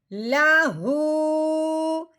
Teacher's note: اب یہ ہا کے اوپر الٹا پیش ہے، ہم نے ہا کو ایک الف کے برابر لمبا بھی کرنا ہے اور پیش والی آواز بھی نکالنی ہے